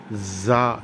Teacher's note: 2 பற்களையும் மேல் முன்பல் கீழ் முன்பல்லை ஒட்டி ஜா என்று கூற வேண்டும். ஆங்கிலத்திலே இசட், ஜீப்ரா என்று உச்சரிப்பது போன்று.